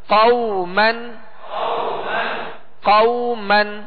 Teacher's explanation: لین کا قاعدہ ہے تو اس کو نرمی کے ساتھ پڑھنا ہے اور زیادہ کھینچنا بھی نہیں ہے، بالکل نرمی کے ساتھ معروف طریقے سے ادا کرنا ہے۔